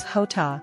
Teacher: J is pronounced as hota, with a throaty sound similar to the Scottish lock